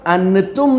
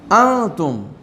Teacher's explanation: یہاں پر انتم نہیں کہیں گے، انتم، نون ہلکا سا چھپ جائے گا یہاں پر، اس کو اخفاء کہتے ہیں